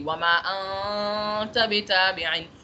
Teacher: اگلا حرف تا ہے تو میں نے تا کی طرح کا غنہ کرنا ہے، تا کی آواز میں غنہ کرنا ہے، تا کی پروننسیشن کے طریقے سے غنہ کرنا ہے.